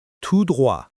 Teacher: The T in tout is silent here.